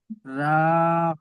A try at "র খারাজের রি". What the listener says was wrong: রা নয়, রা নয়, র খারাজের রি।